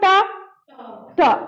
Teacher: और आ यानी मुख के अंदर जो ऊपरी हिस्सा है उसको कहा जाता है मूर्धा। यानी ट का उच्चारण स्थान क्या? मूर्धा।